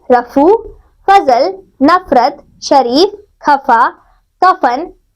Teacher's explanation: को पुरी तरह स्पष्ट नहीं करते बल्कि कुछ इस तरह से हल्का सा स्पर्श करते हैं की हवा घर्षण खाती हुई बाहर निकलती है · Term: ओष्ठ ध्वनि